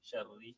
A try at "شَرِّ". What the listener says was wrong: Yeah, don't go too swiftly. Sharri. Sharri. Not sharri. Sharri.